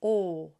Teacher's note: oo and it's a lot like the long closed o when I pronounce a long closed o it feels like the vowel is sitting under my ears o but when I pronounce o I bring it forward and